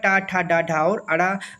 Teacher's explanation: मुर्धा के अंतर्गत ट वर्ग आएगा